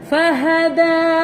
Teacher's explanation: Makhraj untuk huruf dal, hujung lidah belakang gigi atas.